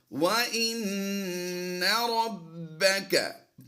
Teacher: نون مشدد میں ہم نے غنہ کیا ہے، غنہ کر کے پڑھتے ہیں وَإِنَّ رَبَّكَ، با حروف قلقلہ سے ہے اور مشدد ہے، تو یہاں پر ہم قلقلہ کرتے ہوئے پڑھیں گے.